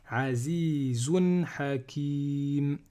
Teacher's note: comme je veux m'arrêter ici, je ne vais pas prononcer le tanwin, je vais dire Azizun Hakim.